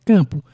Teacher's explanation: Aqui nós temos uma paroxítona com vogal nasal formada por am.